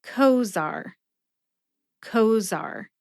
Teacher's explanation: Put both syllables together and you get Cozaar. Emphasize co.